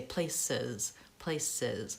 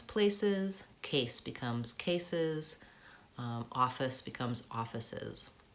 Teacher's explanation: that extra syllable is an E and a Z sound